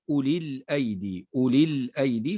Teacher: الثالث هو ما حذف لأجل التخلص من التقاء الساكنين، نحو قول الله تعالى أولي الأيدي، أولي الأيدي، فحذفت الياء هنا في كلمة أولي لأجل التقائها باللام الساكنة، فحذفت لأجل التخلص من التقاء الساكنين.